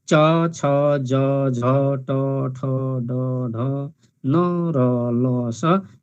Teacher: जिब्राको टुप्पो भागले दाँतको जरामा नै छोएको हामी अनुभव गर्छौँ। त्यसैले च छ ज झ ट ठ ड ढ न र ल स यी वर्णहरू चाहिँ वत्स्य अर्थात् दन्तमूलीय व्यञ्जन वर्णहरू हुन्।